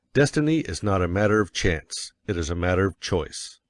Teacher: by all means you must emphasize chance for it is one of the two big ideas in the statement another reason why chance takes emphasis is that it is contrasted